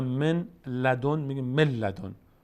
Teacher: به این خاطر مثلا من لدن میگیم من لدن، به جای نون لام تلفظ میکنه. حرف بعدیش اینو میگیم ادغام.